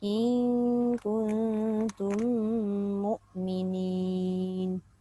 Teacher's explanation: In tu dah dengung, kun dah dengung, tum pun kena dengung.